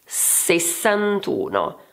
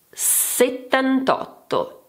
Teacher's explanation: The vowel of the ten disappears, this is because two vowels cannot stay together.